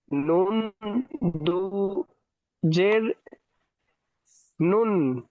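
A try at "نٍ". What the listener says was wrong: নুন দুজের নিন হয়, নুন হয়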